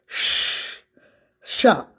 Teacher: So we call it सीटी वाला sha, because when you pronounce, जब हम इसको बोलते हैं तो सीटी की तरह आवाज आती है